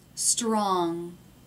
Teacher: tongue up in the back down in the front it's an NG sound strong did you see the tongue tip come up I think